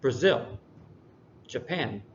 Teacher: the second syllable is is focused on more